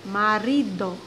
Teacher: A sílaba tônica é na penúltima, marido. Ri vem com mais intensidade. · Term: paroxítonas